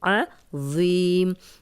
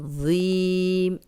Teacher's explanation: ذو ہے، موٹا ہے، نرم ہے اور اس میں سیٹی کی آواز نہیں آئے گی